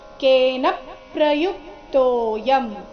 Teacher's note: ಕೇನ ಅಲ್ಲಿನ ನ ಮೇಲೆ ಆ ಘಾತ ಬರಬೇಕು ಮುಂದೆ ಪ್ರ ಸಂಯುಕ್ತ ಅಕ್ಷರ ಇದ್ದ ಕಾರಣ